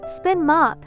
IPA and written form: spɪn mɑ:p (Spin Mop)